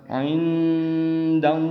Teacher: N-nya juga harus samar di tengah-tengah antara N dan D.